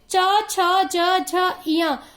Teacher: जब हम लोग च वर्ग का उच्चारण करते हैं तो यह हमारे तालु से, हमारा जो जीभ है वह तालु से टकराता है, इसलिए इसे तालव्य ध्वनि या तालु ध्वनि कहते हैं।